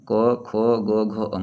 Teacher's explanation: क वर्ग का उच्चारण स्थान कंठ से होगा